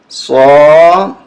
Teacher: صاد کو موٹا کریں